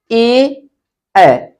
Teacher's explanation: अब देखिए यहाँ पे कंठ वर्ण ए, इसको जब हम पढ़ते हैं तो इसका उच्चारण कहां से होता है, कंठ से होता है। कंठ से भी और थोड़ा सा तालु से भी, दोनों के सहयोग से होता है, कंठ से भी और तालु से। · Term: कंठ तालाबे वर्ण